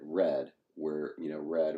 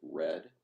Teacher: you know how they often say that the R is labialized in American English? What they mean is that we purse our lips.